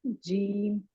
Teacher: زبان جو ہے نا بالکل آگے، تالو کا جو آگے کا حصہ ہے نا وہاں جا کے ٹکرائے گی زبان تو یہ جیم نکلے گا